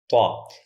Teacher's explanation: طا کا مخرج زبان کی نوک سامنے والے اوپر کے دانتوں کی جڑوں سے مل کر لفظ طا ادا ہوتا ہے۔ یعنی جو مخرج لفظ تا کا تھا، الف با تا میں جو مخرج تا کا تھا وہی مخرج لفظ طا کا ہے، لیکن تا اور طا میں فرق یہ ہے کہ تا باریک ہوتا تھا اور ہمارا لفظ طا پر ہوتا ہے۔ · لفظ طا بولنے میں آواز موٹی ہوگی، پورے منہ میں بھر کے آئے گی اور زبان کا پچھلا حصہ اوپر اٹھے گا۔ طا اس اینیمیشن میں دیکھیں، جب ہم نے تا بولا تھا زبان نیچے تھی، اب طا بولا تو زبان کا پچھلا حصہ اوپر اٹھا۔